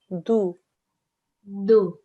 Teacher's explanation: Okay, so when your tongue, when you're making the sound for this letter here, the tongue, the tip of it touches the inside of your mouth, just behind your front teeth. Okay, so spread your tongue out a tiny bit.